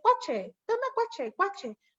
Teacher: Entonces, tlacuache es una palabra complicada y le dice cuache, toma cuache, cuache, porque van como quitando las sílabas que no les son necesarias